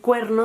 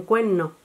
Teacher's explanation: la aspiración de la R implosiva ante la N o la L